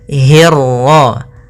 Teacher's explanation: pada lafal hirro hnya tipis ketemu ron-nya yang tebal. Hirro jangan hirro. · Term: ro tafkhim, ra tafkhim